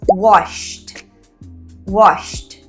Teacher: Wash, não tem vibração. Então, quando nós acrescentamos o ed, o ed vai ter som de t.